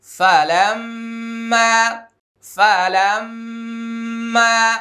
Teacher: ফা জবর ফা, লাম মিম জবর লাম, ফালাম। এটা হরকতের বামে মিমে তাসদীদ, এটা ওয়াজিব গুন্না।